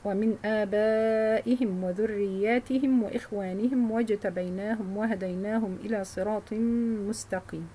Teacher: reading the plural meme as it is with a sukun, like Hafs